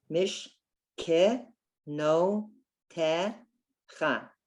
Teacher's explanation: The first one is the silent shva. The second one is the sounded shva.